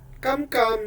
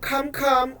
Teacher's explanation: The voiceless, unaspirated, velar plosive versus the voiceless, aspirated, velar plosive in Tagalog.